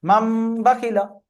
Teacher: তানবিন বা নুন সাকিনের পরে যদি বা আসে তাহলে নুন আর তানবিন বাদ গিয়ে চেঞ্জ করে পরিবর্তন হয়ে মিম আসবে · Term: ইকলাব